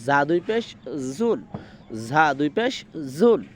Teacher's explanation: জিব্বার আগার নিচের দাঁতের সাথে লাগে, সামনের উপরে, সামনের নিচে, সামনে যে আমাদের দুই সারি দাঁত, উপরে এক সারি নিচের এক সারি, তো নিচের দাঁতের সারির সাথে লাগিয়ে তারপরে বলতে হবে ঝা দুই পেশ জুন, ঝা দুই পেশ জুন।